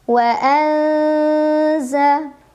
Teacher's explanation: Wa anza, ada ikhfa awsat karena ada nun sukun bertemu dengan huruf zai. Maka cara membaca nun sukunnya samar-samar menuju huruf zai sambil dengung